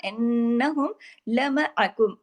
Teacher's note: नून पे तशदीद था, बड़ा गुन्ना, इन्नहुम लमअकुम, आइन को बीच में वाज़ेह करना है, तमाम बारीक हुरूफ है।